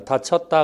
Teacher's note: 다쳤다 할 때 우리가 여로 발음하지는 않습니다. 실제 발음은 어로 발음입니다. 다쳤다 그러지 다치었다 하지는 않습니다. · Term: 단모음화